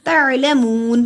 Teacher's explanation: मून को लंबा किया, जिस्म वाली वाव से पहले पेश है, हरूफ मद्दा एक अलिफ के बराबर लंबा होगा।